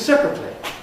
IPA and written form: ˈseprətli (separately)